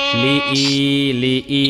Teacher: ই এর মধ্যে টান দিবেন একালি পরিমাণ